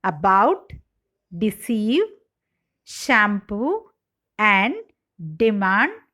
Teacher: have the main stress on the second syllable